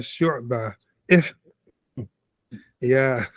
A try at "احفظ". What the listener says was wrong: Right, you have like a fa and a ha together. You have the Now finish that ha first. احفظ. So don't be so hard on the ha. Just pronounce it and go. احفظ. احفظ. Right, احفظ. So be like you hop from your legs. Don't actually land on it like you just hop on it. Like you're just hopping from legs. You're not like landing on it. You're just hopping off it.